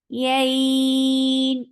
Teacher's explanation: Ya is very soft letter, and then it is 4 counts long because this is madleen. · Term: mad lean